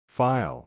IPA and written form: faɪl (File)